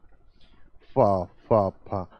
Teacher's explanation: दंतोष्ट होता है, दंतोष्ट है, बोले तो दांत प्लस ओस्ट से, दोनों के मिला के, फा फा फा, हल्का सा जीभ दांत में भी टच करती है और होठ में भी टच करती है